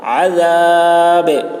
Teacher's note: عین کو حلق سے ادا کریں گے، ذال کی آواز باریک ہوگی، با میں قلقلہ